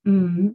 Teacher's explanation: Your lips are closed. Don't let them separate or else it'll say ma. The sound for M is not ma.